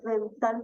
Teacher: al decir dental, usted solamente está utilizando la lengua y la punta de los dientes superiores.